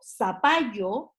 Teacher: en nuestro país no hacemos la pronunciación de la zeta como por ejemplo la hacen los españoles